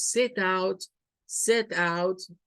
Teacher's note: cuando decimos set out set out es más fuerza en out set out Pero en cambio es es outset outset Y tenemos